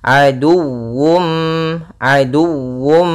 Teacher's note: harus dibaca juga dengan sempurna wawunya dengan tasydid